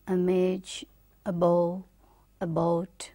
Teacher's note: central unrounded vowel just below half open